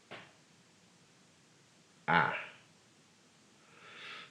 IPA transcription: a